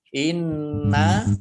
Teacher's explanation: nunnya dibaca tasdid mendengung, ada tasdidnya dibaca mendengung ditahan 2 harokat